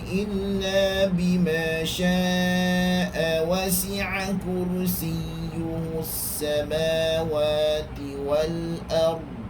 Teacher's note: Dibaca 4 atau 5 harakat ketika wasal, yakni ketika bacaan bersambung.